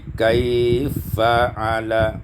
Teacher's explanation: idghamul fa fil fa, diidghamkan fa pada fa menjadi kaifa'ala. Kita baca tawassut, kaifa'ala.